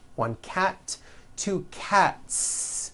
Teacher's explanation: cat cat ends with an unvoiced T one cat two cats again the s ending is unvoiced